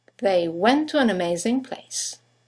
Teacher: two words one ending with a t the next one starting with the T they run into each other · you have the semi-vowel W that connects the vowels to and an to each other.